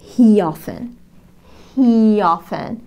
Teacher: He تنتهي ب vowel حرف متحرك. Often تبدأ ب vowel حرف متحرك. نربط الصوتين بوضع ي خفيفة.